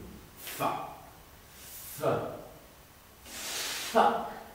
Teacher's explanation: dents d'en haut sur la lèvre du dessous